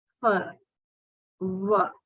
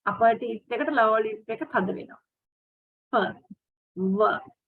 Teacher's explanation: Consider fur and were, as in fine and wine. Both sounds are produced with air being forced through a narrow aperture between the upper teeth and the lower lip.